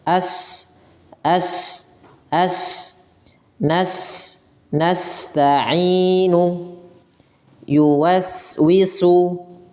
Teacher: Tapi dia kedua-duanya termasuk ya. Sin itu salah satunya sifat hames. Mengalirnya nafas.